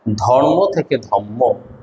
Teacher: রয়ের উচ্চারণটাকে আমরা ম করতেছি